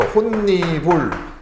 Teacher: 그래서 니은 첨가가 나타나고 그리고 나서 디귿과 니은이 만나서 비음화가 진행이 되죠